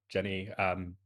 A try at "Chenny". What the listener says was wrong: So not Jenny, CH, Chenny. Chenny. Chenny.